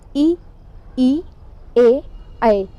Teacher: इनको बोलने पर हमारी जीभ मुख के अग्र भाग को छूती है, तो ये अग्र स्वर कहलाते हैं।